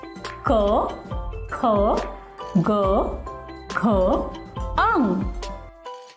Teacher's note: ऐसे व्यंजन जिनका उच्चारण करते समय वायु मुंह के भीतर के किसी न किसी भाग का स्पर्श करके बाहर आती है उन्हें स्पर्श व्यंजन कहते हैं स्पर्श व्यंजन है कवर्ग क ख